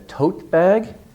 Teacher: long vowel stress on the first part